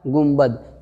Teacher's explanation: یہ ہم لوگوں کو سمجھانے کے لیے یہ چھوٹا سا میم نون کے اوپر دیا جاتا ہے اجمی لوگوں کو، ورنہ جو عربی جانتے ہیں وہ گنبد کبھی نہیں پڑھے گا بلکہ گنبد پڑھے گا، یعنی نون ساکن کے بعد با آ گیا تو یہ نون ساکن میم سے بدل جائے گی